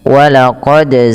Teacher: pantulkan huruf dal ketika huruf dal tersebut sukun dan di sini diwarnai dengan biru yang artinya harus dibaca dengan bacaan qalqalah ya teman-teman.